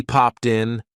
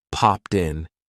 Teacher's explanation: a lot of times we're going to connect that T to the vowel sound